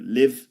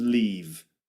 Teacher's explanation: It's a short sound in live and a long sound in leave.